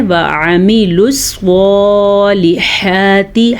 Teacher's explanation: ہا کو اپنی جگہ سے نکالیں، صاد کو موٹا کر کے پڑھنا ہے، کیونکہ صاد حروف مستعلیہ میں سے ہے۔